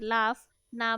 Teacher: দুই ঠোঁটের অর্থাৎ উপরের আর নিচের ঠোঁটের সাহায্যে যে ধ্বনিগুলো আমরা উচ্চারণ করি সেগুলোই দ্বি ওষ্ঠ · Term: দ্বিওষ্ঠ ধ্বনি